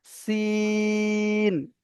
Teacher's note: এটা তিন আলিফ পরিমাণ টান দিয়ে পড়তে হবে